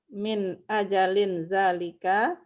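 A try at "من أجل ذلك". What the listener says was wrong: Bukan, ini jangan ini kan mudhaf berarti ya nggak boleh tanwin. Faja'alnahu min ajli dzalika.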